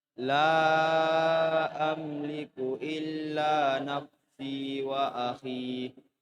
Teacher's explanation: yang terpanjang akhi 2 harokat ya. Yang terpanjang akhi itu 2 harokat saja, tidak boleh lebih.